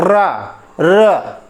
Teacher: र मतलब तालु के साथ स्पर्श हुआ और बहुत ही स्पीड के साथ वो घर्षण कर रहा है, इसलिए, ठीक है, इसको लुंठित कहा जाता है।